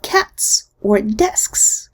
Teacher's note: The final Z completely loses its voicing when it comes after a voiceless consonant.